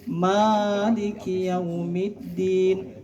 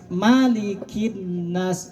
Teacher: Ma-nya 2 harokat, maliki yaumiddin. Itu artinya yang menguasai. Tapi kalau ma dalam Quran surah An-Nas, qul a'udzu birabbin nas malikin nas, ma-nya 1 harokat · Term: panjang pendek